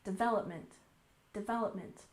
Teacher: development we also stress the second syllable